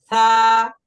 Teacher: এই যে জিহ্বার আগা দাঁতের আগার সাথে লাগাইতে হবে